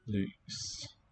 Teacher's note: I hear a consonant cluster at the end. It's just that that first consonant is not written.